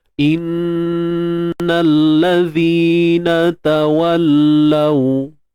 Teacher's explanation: Untuk zal ni tuan-tuan puan, kita kena keluarkan sedikit hujung lidah kita.